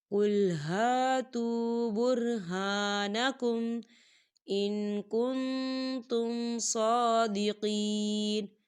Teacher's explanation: واو ساکن ہے، واو ساکن سے پہلے پیش ہے تو یہاں پر واو مدہ ہوگا، دو حرکت کے برابر اسے کھینچ کے پڑھا جائے گا